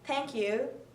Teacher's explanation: the TH sound will be pronounced like T sound, so the Indian people will pronounce thank you like thank you.